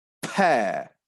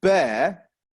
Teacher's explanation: the per sound is made using an expulsion of breath from the mouth as we close our lips the air is exposed from our mouths so has that effect